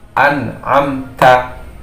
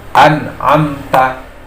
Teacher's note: Jadi mimnya makhrajnya jelas dari kedua bibir, jadi bibirnya tertutup sesuai dengan makhrajnya. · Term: idhar